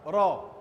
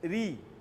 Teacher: bila berbaris atas ra itu tebal, ra. Bila berbaris bawah ra itu nipis, ri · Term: tafkhim